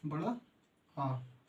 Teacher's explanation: इनका उच्चारण करते समय मुह सर्वाधिक खुलता है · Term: विवत स्वर